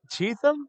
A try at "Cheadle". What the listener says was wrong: There's no T in there.